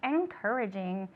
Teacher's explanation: the NG is a nasal sound, and we pronounce it in English